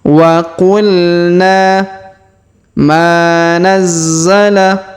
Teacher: huruf Ma kita panjangkan dua harakat karena terdapat Alif di depannya